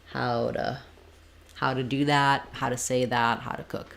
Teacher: We just don't really want to have an oo here for the word to. That's our typical reduction for that. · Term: reduced